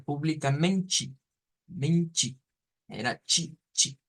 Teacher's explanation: Solo lo estamos destacando porque aquí se diferencia que pues los portugueses lo pronuncian como ti, ¿ya? Y en cambio los brasileiros vienen y nos usan el sonido de una chi, de una ch